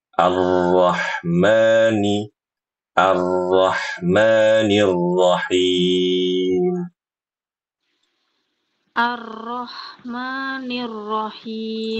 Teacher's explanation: ketika baca arrahma ma ma itu jangan terlalu panjang Bu ya. Seperti diayun saja seperti di ayun.